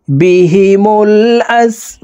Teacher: বা এখানে 3 আলিফ টেনে বাকে সাকিন করতে হবে, কারণ মাদের হরফের বামের হরফে ওয়াকফ হইলে মুদ্দা আরজি 3 আলিফ টানিয়া পড়িতে হয়।